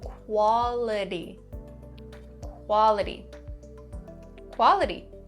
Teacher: For this word, we're going to concentrate on that T sound. Now, for North American English, when the T comes between two vowels, we'll change it to a D sound.